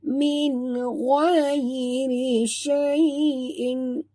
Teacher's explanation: bukan rai tapi ghai tebal ya